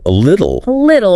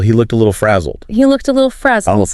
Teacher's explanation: that T in the middle between vowels. It often softens to sound like a D.